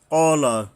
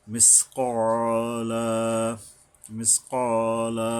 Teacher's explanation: হলকের গোড়ার থেকে উচ্চারণ করতে হবে মোটা করে, সাথে সাথে একালিপ টানতে হবে।